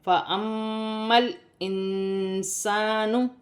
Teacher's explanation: نون ساکن میں اخفا کیا جائے گا کیونکہ نون ساکن کے بعد حرف اخفا میں سے سین ہے، اور یہاں پر الف مدہ ہے، اسے ایک الف کی مقدار کھینچ کر پڑھا جائے گا۔